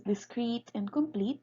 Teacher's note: adjectives such as discrete and complete carries the stress on the ultimate position because the syllable in the ultimate position has a heavy vowel E.